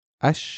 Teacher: we're skipping the lamb and we go straight from alef to the sun letter